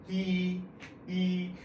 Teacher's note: the sound E in Mandarin is the highest and the most fronted sound in Mandarin. So the tongue positioning is going to be like that, right?